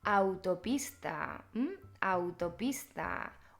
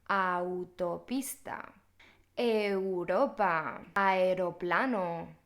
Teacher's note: en español tenemos muchas palabras con dos vocales juntas que se pronuncian como una sola sílaba van unidas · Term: diptongos